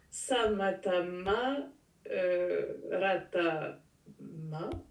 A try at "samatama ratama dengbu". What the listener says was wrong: samatama, ratama, dengbu, mais. Hein, il ne faut pas oublier le dengbu. Moi, je ne l'ai pas entendu, le dengbu. Tu l'as peut-être dit, mais je ne l'ai pas entendu.